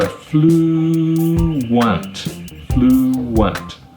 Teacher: So the sound is not like flu and unt, it's like flu and want. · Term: W sound